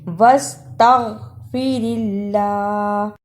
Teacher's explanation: جس اللہ سے پہلے زیر ہو اسے نرم زبان سے ادا کرتے ہیں